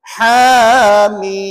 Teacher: jangan pula bunyi dengung kat ujung tu